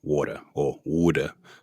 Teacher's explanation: But it's interesting how some of the accents up there in the north of America retain that glottal stop